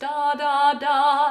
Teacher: it's the tongue doing all the work but it's the connection to the hard palate that is making those consonants · the articulation point is the tongue to the hard palate